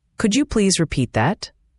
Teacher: The T at the end of repeat can sometimes be almost silent, especially when you flow into the next word. It's not repeat t that, but more like repeat that.